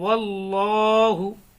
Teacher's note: यहाँ पर अल्लाह के लाम को पुर पढ़ेंगे क्योंकि अल्लाह के लाम से पहले ज़बर है, इसलिए पुर पढ़ेंगे।